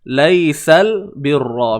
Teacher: Terus bunyikan lam dengan baris atas. Okey, tak perlu tarik bunyi sabdu tu.